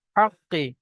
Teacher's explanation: তো আমরা আর কি করেছি, হরফে কলকলা পাঁচটি, পাঁচটি অক্ষরের মধ্যে থেকে এখানে কফ এসছে, কফের উপরে যখন সাকিন হবে তখন একটু ঝাটকার সঙ্গে কলকলা করে পড়তে হবে